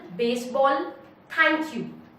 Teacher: Choki is a kind of foot which has 1 strong syllable followed by 1 weak syllable